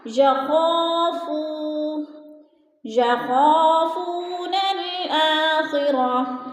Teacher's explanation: کلا بل لا یخافون خا پہ الف مدہ ہے، الف خالی سے پہلے خا کے اوپر زبر ہے تو الف مدہ، اور فو کے اوپر وہ مدہ ہے، وہ ساکن سے پہلے، فا کے اوپر پیش ہے تو وہ مدہ، یخافون الآخرہ، الف مدہ اور وہ مدہ دونوں کو ایک الف دو حرکات کے برابر ہم نے کھینچ کر پڑھنا ہے۔ اب یخافون نون کو لام کے ساتھ ملانا ہے۔